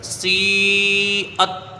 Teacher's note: حرف مد کے بعد حمزہ اسی کلمے میں ہے تو یہاں پر مد متصل ہوگا جس کی مقدار 2 ڈھائی 4 الف ہے ، اور حمزہ کو تا سے ملا کے جلدی پڑھا جائے